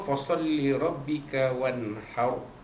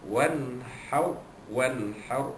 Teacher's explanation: nun mati jumpa dengan ha, hukumnya izhar halqi